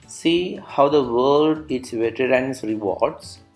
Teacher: The meter used is iambic, means unstressed syllable followed by stressed. Likewise, five such units: unstressed, stressed 1, unstressed, stressed 2, unstressed, stressed 3, unstressed, stressed 4, unstressed, stressed 5. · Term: iambic pentameter